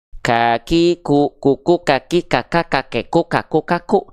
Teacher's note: Namun pengkhususan untuk huruf kaf bukan mengalir nafas, tapi hanya berupa percikan nafas saja.